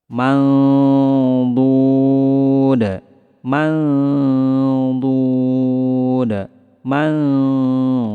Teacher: Kemudian lidah kita bersiap-siap ke huruf dhad. Samarnya lebih ditebalkan karena huruf dhad merupakan huruf tebal.